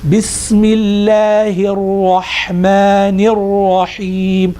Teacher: But on this, for example, when we say Bismillahir Rahmanir Rahim, completely the lam is as if it doesn't actually exist